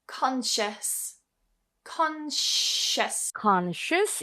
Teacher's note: So remember it's not S here but a sh.